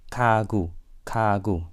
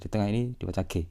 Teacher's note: ketika muncul di antara vokal itu diucapkan sebagai suara velar bersuara yang mirip dengan suara Q.